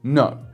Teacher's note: fact this kind of starts a little bit higher than versatile it almost gets a little bit squeaky at the beginning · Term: fourth tone